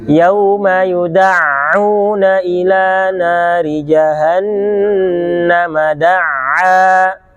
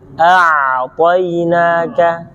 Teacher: tidak menjaga sifat bainiyah, harusnya tetap ada yang mengalir sedikit. Yauma yuda'u baru ditekan.